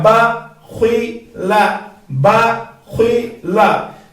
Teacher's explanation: با کو ہم نے جو ہے باریک پڑھنا ہے، اور لام کو بھی باریک پڑھنا ہے